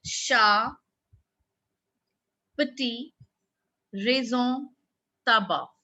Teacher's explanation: The last consonant in a word is not pronounced